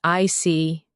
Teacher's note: When you show understanding with "I see," your tone drops slightly to show calmness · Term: intonation